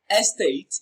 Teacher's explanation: state receives the stress it is pronounced louder and longer